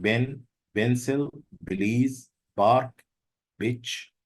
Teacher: students would pronounce these words as if they are voiced. They have a voiced ba. So you would hear something like ben, pencil, Belize, bark, bitch.